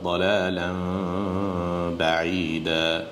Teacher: তারপরে এখানে ইকলাব আছে, দালালান বাঈদা। প্রথমে নুনকে আমরা মিম করে দেব, ইকলাব করে দেব, করে দেওয়ার পরে আবার মিমের সাথে বায়ে ইখফা হবে, দালালান বাঈদা।